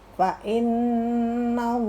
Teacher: huruf Allahnya baca tebal lamnya.